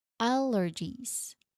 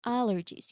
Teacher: pronunciationwise, you emphasize the first syllable.